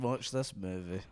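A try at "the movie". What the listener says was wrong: You said da movie the first time, like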